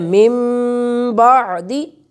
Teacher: اگر نون ساکن ہو یا نون تنوین ہو اور اس کے بعد با آ جائے تو وہاں ایک چھوٹا سا میم جو ہے ہم اسے لکھتے ہوتے ہیں اور اس کو اس میم کے ساتھ ملا کر وہ آواز نکال کر پڑھتے ہیں